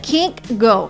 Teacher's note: i can go now and it sounds like kink go so we kind of add another g at the end of the word can